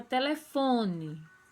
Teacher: Na palavra telefone, fo é a sílaba tônica, é a mais forte